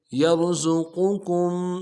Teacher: قاف کو موٹا کریں گے، کاف کو میم کے ساتھ ملانا ہے، میم ساکن بغیر غننے کے ساتھ پڑھیں گے